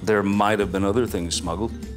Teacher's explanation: So instead of enunciating the words might have, which would make it sound more like it's spelled, natives will often drop the V sound at the end